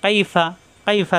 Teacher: ফা উপরে দাঁতের আগা নিচের ঠোঁটের পেট থেকে উচ্চারণ